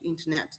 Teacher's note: ударение в слове internet упало у него на последний слог